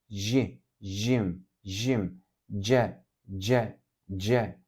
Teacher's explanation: Jim burada dil ile Üst damak arasında havayı sıkıştırarak söylenir j'ye benzer bir sestir bu ji Jim Jim c c c